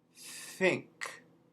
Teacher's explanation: those th's turn into an f